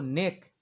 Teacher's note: ক এর সঙ্গে অ এর উচ্চারণ হচ্ছে না তাই ক এর সঙ্গে অ আমরা লিখবো না এবং তারপরে রয়েছে